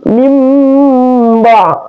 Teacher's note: Min ada nun sukun bertemu dengan ba, maka dia adalah iqlab. Itu seakan-akan nun sukunnya dibaca min ya.